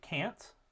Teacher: is the low front vowel a however before an N um it takes on kind of that nasality because you're opening up the back of the mouth to allow air to pass through to get ready to produce that that NE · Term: assimilation